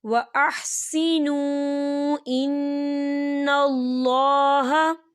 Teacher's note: واو ساکن سے پہلے پیش ہے تو واو مدہ ہو رہا ہے، تو آپ نے یہاں 2 حرکت کے برابر کھینچ کے پڑھنا ہے اور اسے ملا کر پڑھنا ہے.